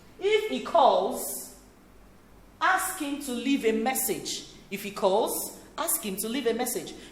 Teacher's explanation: The tone rises in the first clause and falls gradually in the second. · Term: Conditional statements